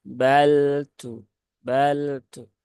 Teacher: alirkan sedikit ya karena dia sifatnya ee bainiah atau tawasuk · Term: lam sukun